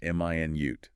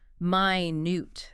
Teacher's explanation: Stress on the first syllable. M i nute. That's the unit of time 60 seconds. Stress on the second syllable minute. That's the adjective meaning very very small tiny.